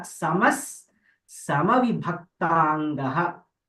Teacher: Then Samaha, that Visarga gets a Sakara.